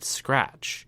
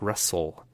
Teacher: With the friction of life, we have words like rustle and crackle and scratch. The s and ch sounds create actual friction in your mouth.